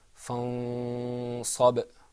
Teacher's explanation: Now I bet you that second time you heard that something happened to the noon. It wasn't articulated completely. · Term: ikhfa